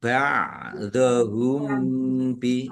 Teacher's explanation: mim sukun bertemu dengan huruf ba. Bacaan ikhfa syafawi dibaca samar-samar.